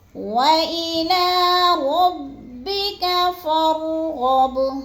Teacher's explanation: اور غب، غین بھی پورا پر پڑھا جائے گا اور با کو ہم نے تھوڑا سا ہلا کے پڑھنا ہے کیونکہ حروف قلقلہ میں سے ہے